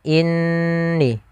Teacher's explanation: Nun bertasydid sama kita hukumi dengan ketika adanya mim bertasydid, yaitu hukumnya sama, yaitu kita menahan suara gunnahnya sepanjang 2 harakat. Maka inni jangan langsung inni.